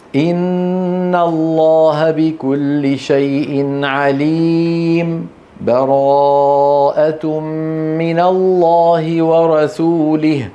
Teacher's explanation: والوجه الثالث ان يسكت يعني بدون تنفس